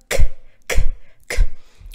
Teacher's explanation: глухой очень глухой звук задняя часть языка у нас прижимается к небу